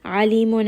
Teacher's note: Ain is from the middle of the throat.